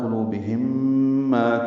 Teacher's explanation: میم ساکن کے بعد میم آنے کی وجہ سے ادغام ہوگا